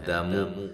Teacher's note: مد جائز ہے، آ الف مدہ کے قائم مقام ہے، دامو دا میم دونوں کو باریک ادا کرنا ہے اور لمبا بھی نہیں کرنا